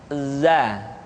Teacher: huruf Za diucapkan dengan cara ujung lidah kita berada di antara dua gigi seri bagian atas dan bagian bawah Zaza menyerupai dengan pengucapan huruf z di dalam huruf latin tetapi